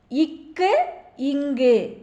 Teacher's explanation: நாக்கின் முதற்பகுதி மேல் அன்னத்தில் ஒட்டும்போது க என்னும் எழுத்து பிறக்கிறது அஞ்சாவது கொஸ்டின் நாவின் முதல் பகுதி அன்னத்தின் அடிப்பகுதியை பொருந்துவதால் பிறக்கும் மெய்யெழுத்துக்கள்